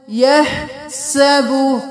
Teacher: हा बिल्कुल साफ गले के दरमियान से अदा होगा